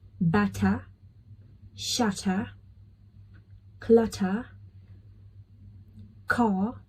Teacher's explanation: Like, see, I'm not pronouncing R in here. So in the British accent, whenever R comes at the end of the word, you will drop the sound of R · when it comes to R, you need to drop it